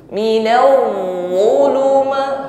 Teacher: Hurufnya bertasydid berarti ditekan. Namun ketika menekan huruf wad tidak boleh bunyi hurufnya putus karena sifatnya rakhawah jarayan shaut, bunyi hurufnya tetap mengalir.